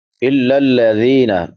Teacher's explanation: ذال نرم حروف میں سے ہے، 3 حروف جو نرمی سے ادا ہوتے ہیں، سا ذال ضا، تو اس کو نرمی سے پڑھیں گے. ذال کے بعد یا مدہ ہے، یا ساکن ما قبل کسرہ یعنی زیر ہے، تو اس کو ایک الف کے برابر لمبا کریں گے.